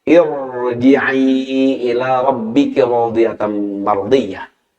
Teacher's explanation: Ya, irji'i tidak irji'i, tidak tipis, tapi irnya dibaca tebal